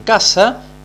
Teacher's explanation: Esos tres sonidos gráficos van a intentar representar a un solo sonido, que es el sonido oclusivo velar sordo de la K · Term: oclusiva velar sorda